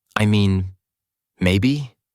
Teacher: When they are unsure, they might say, "I mean, maybe." Pausing and softening their voice to signal hesitation